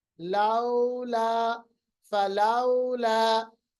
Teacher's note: तो लीन भी एक सिफ्त है, वाव साकिन माकबल जबर, या साकिन माकबल जबर, और जब भी इस कंडीशन में आते हैं तो इनकी आवाज मलायम या नरम होती है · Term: वावलीन